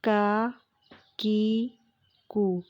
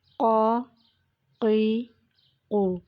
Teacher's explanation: کاف ہے اس کی ادائیگی کرتے وقت زبان کی جڑ اور تالو کے سخت حصہ کا استعمال ہوا ہے، جبکہ قاف کی ادائیگی کرتے وقت زبان کی جڑ اور تالو کا نرم حصہ